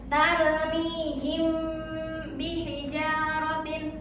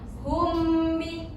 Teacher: hukum mim mati bertemu dengan huruf ba itu dibacanya dengung selama dua dua harakat.